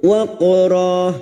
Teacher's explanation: Ra fathah tanwin yang dibaca waqaf selain tak marbutoh namanya mad iwad, cabang dari mad tabi'i, 2 harokat kita panjangkan